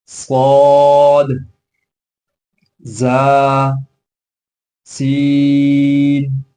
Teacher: ان حروف کے ادا کرتے وقت سیٹی کی آواز بھی آنی چاہیے